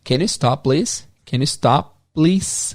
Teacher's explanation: esse P do stop vai ser quase nulo, você quase não vai ouvir. Então, ao invés de can you stop, please, eles falariam algo como can you stop, please?